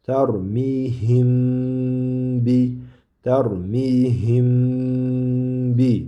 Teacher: Chunki ba bilan mim harfini mahraji bir-biriga juda yaqin bir joydan chiqadi. Shuning uchun buni mimni ba harfidan oldin kelgan, ya'ni ba harfidan oldin kelgan mimni demak ushlab turiladi. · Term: G'unna